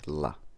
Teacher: English has one lateral sound, and that is the alveolar lateral approximant la.